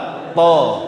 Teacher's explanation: ujung lidah nutup ke gusi atas. Baru dilepas baru ada suara to. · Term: huruf syiddah